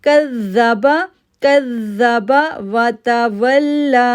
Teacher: واو کو لام کے ساتھ جوڑا، واو کو لام کے ساتھ جوڑتے ہوئے لام پر تشدید ہونے کی وجہ سے ہم 1 سیکنڈ کے لیے رکے، پھر لام کھڑی زبر کو ہم نے 2 سیکنڈ کے لیے کھینچا